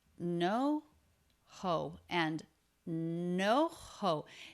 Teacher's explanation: It has a up-down shape for a stressed syllable.